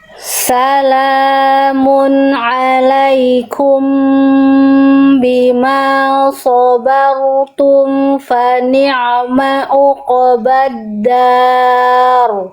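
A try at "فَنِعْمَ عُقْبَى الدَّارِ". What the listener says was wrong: Kembali lagi ketemu sama ain uqobah, tekan ainnya. Jangan jadi semi-semi jadi ain bukan, hamzah bukan. Jadi nggak jelas tuh apa itu bunyinya. Fa ni'ma'u, fa ni'ma'u, jangan uqoba, ditekan ainnya. Salamun alaikum bima sabartum fa ni'ma uqbaddar. Ya, jadi ayatnya tegaskan lagi.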